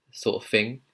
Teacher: there's another situation where the th sound turns into an f